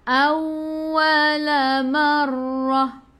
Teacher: Awwala marrah tekan ke dalam ra ada sabdu. Ra baca dengan tebal, ra baris atas tafkhim. Bila berhenti ta marbutah kita tukar jadi ha.